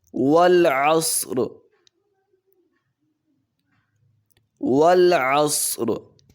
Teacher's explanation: والعصر واو پہ ہونٹ کو گول کریں گے، عین کو حلق سے ادا کریں گے، صاد کو موٹا بھی کریں گے اور سیٹی بھی نکالیں گے اس کی ادائیگی میں.